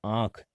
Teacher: अनुनासिक नाक और मुंह के द्वारा बोले जाते हैं · क्योंकि अनुस्वार का उच्चारण केवल किससे, मुंह से किया जाता है, लेकिन जो अनुनासिक होता है उसका उच्चारण नाक और मुंह दोनों से किया जाता है